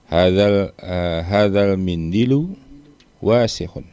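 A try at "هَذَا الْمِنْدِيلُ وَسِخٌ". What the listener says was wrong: Pendek semua bacanya, betul.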